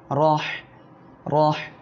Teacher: র অক্ষরের উপরে জবর আসছে মোটা করিয়া পড়বেন